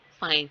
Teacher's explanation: आपका lower lips अपर teeth के साथ टच कर रहा है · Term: लेबियोडेंटल